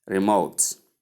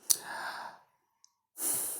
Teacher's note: The stress comes on the second syllable.